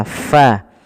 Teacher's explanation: ketika melafalkan fa itu bibir kita tidak terlalu rapat dan ada rongga yang kita keluarkan untuk mengeluarkan nafas kita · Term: huruf F